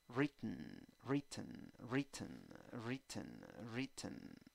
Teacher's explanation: Y en la segunda sílaba tienes una mini schwa.